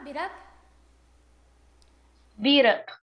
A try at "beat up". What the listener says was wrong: Aê, very good, very good, gente.